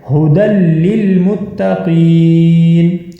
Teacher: ہدی للمتقین، اب یہاں پر ہا کے اوپر موٹی ہا پڑھی جائے گی اور ہا کے اوپر ہے پیش، دال کے اوپر آپ کو 2 زبر نظر آ رہی ہیں، آگے جو ہے یا لکھی ہوئی ہے، یہ یا نہیں پڑھی جائے گی